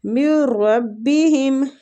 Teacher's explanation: ادغام بلا غنہ ہو رہا ہے، مطلب غنہ نہیں کرنا، غنہ کے بغیر. نون ساکنہ کے بعد را آ رہا ہے، را اور لام دونوں حروف اگر آتے ہیں تو پھر ہم ادغام بلا غنہ کرتے ہیں، ٹھیک ہے.